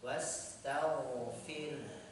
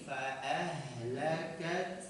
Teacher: ada aliran suara ha dari aqsal halqi tenggorokan bagian dalam